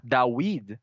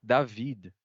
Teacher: em hebraico mesmo o som de w terminou se tornando V dawid se tornou David por exemplo né Então aí ele tá